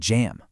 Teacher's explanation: It starts like a duh and then releases with that vocal cord vibration. It's the same pattern just with a two-part sound. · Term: J sound